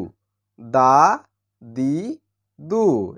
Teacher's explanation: উপরের দাঁতের গোড়ার সঙ্গে লেগে উচ্চারণ করতে হয় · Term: দাল